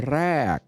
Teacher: or ra is a falling tone